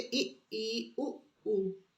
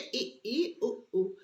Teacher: जब जीभा बहुत ऊपर उठती है तो मुख विवर का मार्ग संकरा हो जाता है। इस स्थिति को समृद्ध कहते हैं।